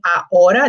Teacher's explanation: the letter H in Spanish, we don't pronounce it